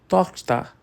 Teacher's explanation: O som gutural está lá, firme e forte no CH.